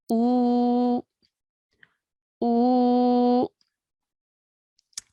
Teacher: Okay, now because it's followed by a waw sakin, this now will become a waw mud. And now since this is a waw mud, we will stretch our sound for 2 counts now. Okay, so whereas before the alif with the dhamma was just 1 count, now it will be pronounced for 2 counts because of the waw mud.